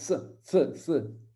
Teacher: Cette valeur phonétique est selon le contexte une consonne occlusive alvéolaire sourde et une consonne fricative alvéolaire sourde